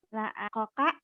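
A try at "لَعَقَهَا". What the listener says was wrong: Jadi kho itu kadang-kadang orang orang Probolinggo itu koka. Kho-nya ke ko kadang-kadang ya.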